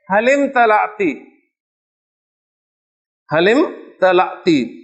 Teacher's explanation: وہ حمزہ جسے پیچھے سے ملا کر پڑھا جائے تو وہ حمزہ لکھنے میں رہتا ہے، پڑھنے میں نہیں آتا، اور بعض جگہ وہ لکھنے سے بھی ہٹا دیا جاتا ہے. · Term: حمزۃ الوصل